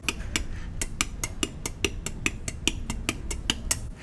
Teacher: we alternate that t hi-hat sound with a little k little guttural k sound like this now in isolation it's probably very obvious that those